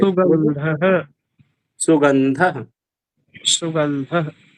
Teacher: विसर्ग के पहले जो स्वर है उसको फोर्स करिए विसर्ग को आराम से बोल के छोड़ दीजिए उसको फोर्स करने की जरूरत नहीं है वो नेचुरली हो जाएगा अगर विसर्ग में फोर्स करेंगे तो अति हो जाती है बस इतना ही ठीक है।